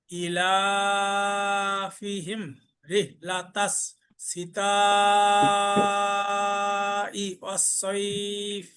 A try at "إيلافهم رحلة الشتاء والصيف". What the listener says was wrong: রেহ হা উচ্চারণ হবে, এখানে শিনের জায়গায় মনে হয় যে সিন হয়ে গেছে, এখানে শিন।